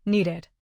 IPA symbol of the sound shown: ɪd